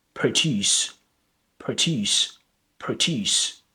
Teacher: So produce with the schwa sounds is the verb produce